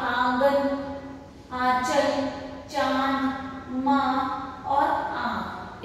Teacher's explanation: इसकी अनुनासिक की जो ध्वनि है वह नाक और मुंह से निकलती है।